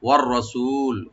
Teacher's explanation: ওয়ার রসুল, ওয়া open রাখবেন, আর রাটাকে ডিপ করে পড়বো, সু একালে টানবেন, লি বলবো এখানে, ওয়ার রসুলি।